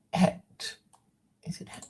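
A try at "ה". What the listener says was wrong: It's not a het. It's close. Yeah, it's a hey.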